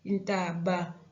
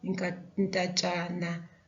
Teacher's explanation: where we get this sound B being the last consonant of the noun, it will change into TSH